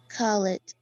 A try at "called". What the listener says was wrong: Just the pronunciation. As I said before, we never pronounce this vowel. So here the pronunciation is called, called.